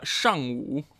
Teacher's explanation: fourth tone followed by third tone